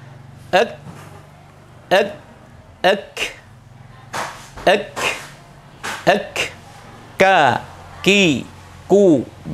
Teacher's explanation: kaf itu posisi makhrajnya ada di bawahnya qaf, sama-sama keluar dari pangkal lidah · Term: huruf kaf